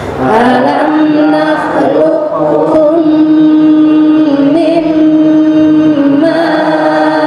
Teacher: qofnya itu hilang sifat qalqalahnya ya tetapi sifat yang lain tetap menempel